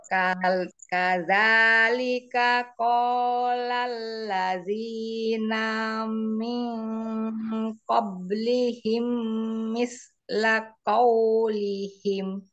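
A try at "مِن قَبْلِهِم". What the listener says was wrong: Ya, kol-kola pada huruf ba tidak mingkoblihim. Nah, jangan mingkoblihim, mingkoblihim, kobe, kobe, abe, ibe. Nah, pantulkan.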